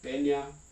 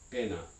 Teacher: the word pena with a medial palatal nasal means something like crag or rock but then with a dental or a coronal nasal means trouble